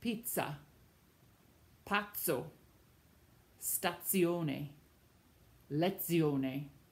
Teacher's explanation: The Z in Italian does not sound like the English Z. It sounds instead like a TZ, like the word you know, pizza, pazzo, stazione, lezione.